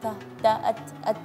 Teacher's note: Iya, kalau tak tidak ada hamsnya. Jadi disempurnakan dengan sifat hamsnya, yaitu ada suara angin sedikit